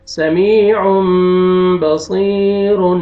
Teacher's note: اس میں بھی یا سکون سے پہلے کسرہ ہے، یا مد ہے، صاد کو آپ نے کھینچنا ہے